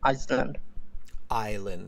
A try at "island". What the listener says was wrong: Island. Yeah, you don't pronounce that S.